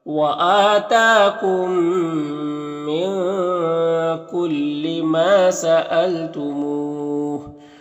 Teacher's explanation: میم ساکن کے بعد میم ہے تو میم کو اس میم سے ملا کر غنہ کے ساتھ پڑھیں گے، اس کو ادغام ناقص کہتے ہیں. · یہاں پر نون میں اخفا ہوگا. ما میں الف مدہ ایک الف کے برابر کھینچیں گے. یہاں پر مو میں واو مدہ ہے اور اگر یہاں پر وقف کریں گے تو پھر مد عارض وقفی ہوگا تو اس طرح سے پڑھیں گے.